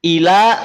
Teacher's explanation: lamnya tipis lafaz Allah dibaca tebal